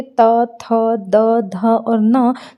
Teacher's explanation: त जब बोलेंगे तो हमारी ज़बान टच करती है हमारे दांतों को, इसीलिए त वर्ग के जो व्यंजन कहलाते हैं वो कहलाते हैं दंत।